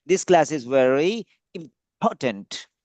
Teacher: So stress on the word important